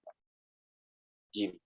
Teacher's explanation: jim tengah-tengah lidah bertemu dengan langit-langit. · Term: huruf jim